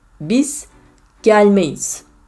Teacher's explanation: there is a ye, which is a semi-vowel in between two vowels